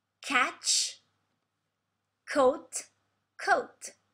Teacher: The pronunciation is always the same, so with oat, but we change the vowel. We don't have the diphthong OU, but AU.